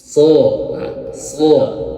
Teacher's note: Kemudian pangkal lidahnya diangkat, isti'la, kemudian itbaq tebal, ya. Kemudian sofir ada desisan. · Untuk makhrajnya ujung lidah menyentuh ujung gigi seri bawah. Nah, so. Kemudian pangkal lidahnya diangkat, isti'la, kemudian itbaq tebal, ya.